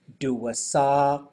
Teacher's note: So this one, the double A, especially with the KW at the end, something that I used to do and I hear people do a lot, like do a saw, is I'll hear them say do a sow. So if it rounds too soon, you get this ow sound, where you want it to go do a saw.